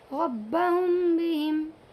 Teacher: मीम में दोनों होंठ मिलते हैं ना एक साथ नहीं मिलाएंगे, बल्कि थोड़ा सा खाली यानी जगह छोड़ेंगे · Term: इख़फ़ाए शफवी